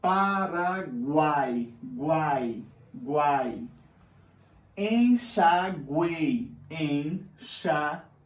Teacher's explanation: É o encontro de 3 sons vocálicos na mesma sílaba. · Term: tritongo